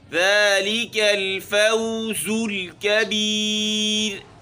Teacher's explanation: ذالک الفوز الکبیر، ذالک ذال باریک ہے، ذالک الفوز الکبیر، را یہاں پر باریک ہے، یا ساکن سے پہلے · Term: را باریک